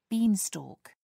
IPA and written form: ˈbiːnˌstɔːk (beanstalk)